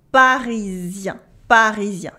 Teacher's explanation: the un at the end of parisien is not a en sound as it should be. Yes, because at the end of a word, the en becomes a un. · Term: nasal sounds